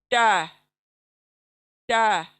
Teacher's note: जबान की नोक और सामने के दांतों की जड़